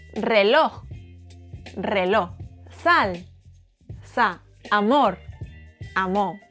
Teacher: We eat any final consonant.